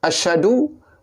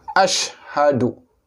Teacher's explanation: Maka kita kena jagalah shin, yang mana salah satu sifat yang penting adalah tafashi. Dan ha, makhrajnya adalah berhampiran dengan dada. Jadi kena sebut satu-satu. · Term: bunyi ha